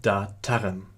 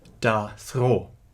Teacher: the change of the voiceless stop t, as in the full grade form of the suffix tar, to a fricative in da thro is the result of a decisive sound change in the prehistory of Avestan, which turned plosives into fricatives when followed by a consonant.